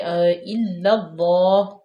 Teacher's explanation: اس کے بعد ہے الا اللہ، حمزہ زیر، حمزہ کے نیچے زیر ہے، لام مشدد ہے، الا اللہ، اور لام کو ہم ڈائریکٹ اللہ کی لام اسم جلالہ میں ملائیں گے، مشدد ہے اور اس کو پور پڑھیں گے یعنی کہ الا اللہ موٹا پڑھیں گے۔ اللہ کی لام سے پہلے زبر آ جائے تو اس کو موٹا پڑھا جاتا ہے